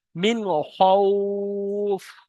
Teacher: মিন বলে গুণনা করা যাবে না, হরফে হালকি ছয়টির মধ্যে খয়েস, তাই বিনা গুণনা পড়তে হবে মিন।